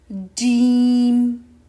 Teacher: The middle of the tongue will touch the roof first and then the sound is produced. · It's articulated from the middle of the tongue and what lies opposite to it, which is the roof of the mouth or the hard area. While reciting Jeem, the middle of the tongue is raised and it touches the roof of the mouth.